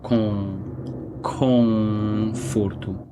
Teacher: before a consonant, the sound is always nasal. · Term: nasal sound